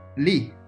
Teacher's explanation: you need to start your pitch a little bit higher and then let it drop. So it's ah, ah. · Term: fourth tone